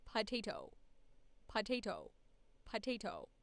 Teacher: in these letters so it's doing your p p p and you're almost going straight into the vowel without letting the breath out